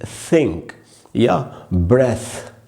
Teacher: T H से जब थ बनता है जो थीटा का साउंड है तो वो फिर अनवॉइस्ड साउंड होता · और लास्ट में TH से जब थ बनता है, TH से जब द बनता है, अभी हमने ऊपर देखा तो वो वॉइस्ड साउंड था, लेकिन TH से जब थ बनता है, जो थीटा का साउंड है, तो वो फिर अनवॉइस्ड साउंड होता है